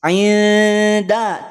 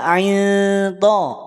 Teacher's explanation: Huruf dalnya tidak perlu dibaca tebal. Huruf dal jangan sampai tertarik menjadi tebal.